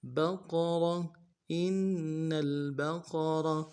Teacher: ساتھ ملانا ہے، اور با کو نم سے ادا کریں گے، قوف کو موٹا ادا کرنا ہے، را کو موٹا ادا کریں گے